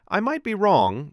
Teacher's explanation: If I say, "I might be wrong," with a tiny pause after wrong, it signals openness. A gentle rise in tone at the end feels like an invitation, not a verdict.